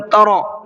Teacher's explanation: وترکہم, ترا را کو منہ بھر کے پڑھنا ہے, اس لیے کہ را کے اوپر زبر ہے